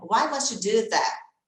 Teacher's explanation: Isso é um som de CH aí. Sempre quando tem essa junção de T com Y, tá? Must you.